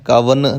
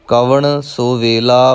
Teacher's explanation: ਇਹ ਕਵਣ ਨਾਣੇ ਨਾਲ ਹੀ ਉਚਾਰਨ ਕਰਨਾ ਹੈ, ਨੰਨੇ ਨਾਲ ਨਹੀਂ